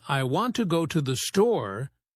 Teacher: For example, in I want to go to the store, the main stress is on want and store. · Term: word stress